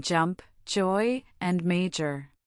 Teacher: This is not a simple sound. It is a combination of a quick stop followed by a fricative. You create it by placing the tip of your tongue against the hard ridge behind your upper teeth, building pressure, and then releasing it into the buzzing sound of the Z sound, all while your vocal cords vibrate. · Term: voiced affricate